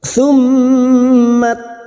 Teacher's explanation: mim yang bertasdid gunna musaddadah, kita dengungkan selama 3 harakat